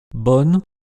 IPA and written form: bɔn (bon)